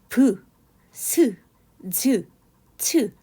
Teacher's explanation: 자음이라고 하는 것은 공기가 방해를 받으며 나오는 소리 브, 스, 즈, 츠 하면 어딘가 계속 마찰이 되는 것 같은 그런 소리들이 들리죠